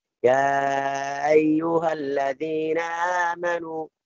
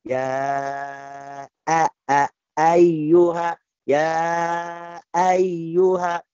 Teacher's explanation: Ya ayyuha ini tashin, namanya tashin, jadi lembut sekali atau lunak sekali sampai jadi tidak ada hamzah